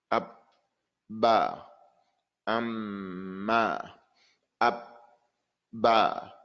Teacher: it's pronounced by joining the two lips together colliding the two lips together